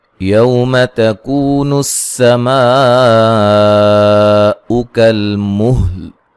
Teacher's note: ہا اور لام کو واضح کر کے پڑھنا ہے لیکن ہلانا نہیں ہے